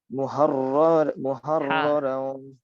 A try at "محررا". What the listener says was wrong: মুহাররর র টান হয়ে যাচ্ছে, টান যেন না হয়।